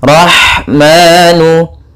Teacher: Kemudian rahmanu, pada lafaz rah yaitu ada ha yang memiliki sifat hamas, mengalirnya nafas kita dalam pelafalannya dan halus lembut dalam pelafalannya